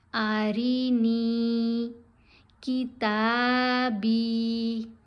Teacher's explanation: تا کے ساتھ بھی حرف مدہ ہے، با کے ساتھ بھی، دونوں کو لمبا کرنا ہے